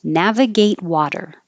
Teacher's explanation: don't pronounce the final t on navigate just hold your tongue in that position and then the T in water changes to a flap or · on navigate just hold your tongue in that position and then the T in water changes to a flap or a d